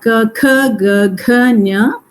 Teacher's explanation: Ka first and the third is Alpa Prana, second and the fourth is Mahaprana, Nya is Anusnanisika, and the entire Varga is called Ku.